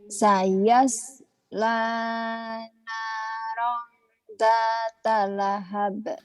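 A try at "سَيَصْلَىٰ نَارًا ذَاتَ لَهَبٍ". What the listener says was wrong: Za tuh double A kan? Sayasnya jangan ke S, kan ada SHO tuh.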